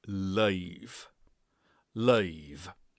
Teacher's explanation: And we have an L followed by a slightly changing vowel sound.